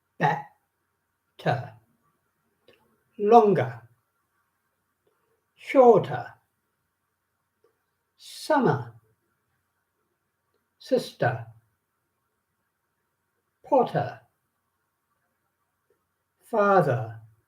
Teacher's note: So all these sounds are weak and the R's are not pronounced in English.